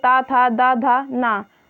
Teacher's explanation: त था द धा न ध्वनियों का उच्चारण स्थान दंत है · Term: दंत वर्ण